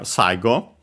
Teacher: Accent should be on the first syllable, and it is.